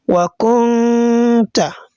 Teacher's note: So you are going to conceal the sound of that nun into ta. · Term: ikhfa'un haqiqi